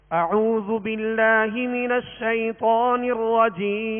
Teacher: طا کو ادا کرتے ہوئے طا کو پر پڑھیں گے